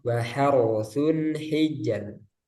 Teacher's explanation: wa harsun hijr yang ro pertama tebal